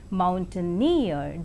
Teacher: in the 3-syllabled word mountaineer, the last syllable is more prominent